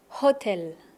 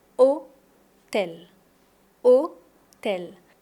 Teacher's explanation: Mais on n'entend pas le H de hôtel.